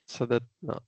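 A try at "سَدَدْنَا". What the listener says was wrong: सदत, सददना, सददना। अब यहाँ पे आपने देखें क्या किया, आपने जो शद्दा आ रहा था उसको लूज कर दिया यहाँ पे, राइट?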